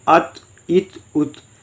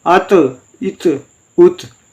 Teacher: بغیر جنبش دیے پڑھیں حمزہ طا زبر ات، اب آواز بند ہوگی